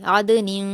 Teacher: عین پر حرکت جلد پڑھیں گے، دال پر جزم ہے، عین کو دال سے ملا کر پڑھیں گے اور قلقلہ کریں گے